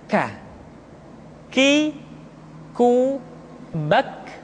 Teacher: Diucapkan dengan mengangkat pangkal lidah kita ke posisi di depan huruf qaf. K. Diucapkan dengan mengalirkan nafas kita. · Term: huruf K